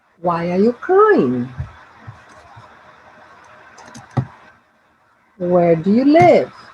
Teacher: information questions they have a falling intonation